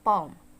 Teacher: the back vowel is produced by positioning the back of tongue in the direction of soft palate